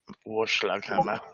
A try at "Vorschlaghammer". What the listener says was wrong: With a V, the V. V is in Victor.